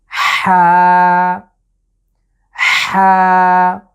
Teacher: কণ্ঠের মাঝখান থেকে চাপ দিয়ে আমরা উচ্চারণ করব